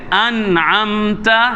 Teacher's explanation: یہاں اظہار ضروری ہے کیونکہ نون ساکن کے بعد حروف ہلکی میں سے عین آ رہا ہے۔ انعمت، نون واضح کریں، انعمت۔